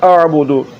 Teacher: یہاں پر دال کو لمبا نہیں کرنا ہے، اس کو پڑھنا ہے اعبدو۔